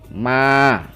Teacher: min syarri ma-nya juga dua ketukan, yaitu fathah diiringi alif, ma. Ghasiqin, ya, gha juga fathah diiringi alif dua ketukan.